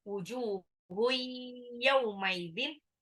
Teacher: tanwin ketemu ya, itu dilebur tapi ditahan, itu ambil gunah